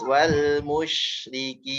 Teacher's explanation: Nah, pastikan wawunya tipis, shinnya dialirkan, shin ya tengah lidah. Ketemu langit-langit, tapi ada suara ada udara yang ngalir deras. Dia punya sifat tafashi.